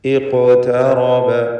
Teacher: ഖാഫിൻ്റെ സുക്കൂൻ ഖൽഖല സുഗ്റ നൽകി ശബ്ദം ഹറക്കത്ത് പോലെ ചലിപ്പിച്ചുകൊണ്ട് ഉച്ചരിക്കേണ്ടതാണ്. ഖാഫിന് തഫ്ഖീം കൊടുക്കുകയും വേണം.